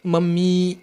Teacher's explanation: ठीक है, जिनमें अभी बताया ना एक अंतिम जो वर्ण होता है वो बहुत लंबा खिंच जाता है, जैसे आप मम्मी बोलिए, मम्मी, ई जो लास्ट वाला है ना वो बहुत लंबा खिंच जाता है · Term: प्लुत स्वर